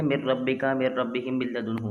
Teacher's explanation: ہم نے یہاں نون سائلنٹ کر دیا تینوں حروف میں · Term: بغیر غننے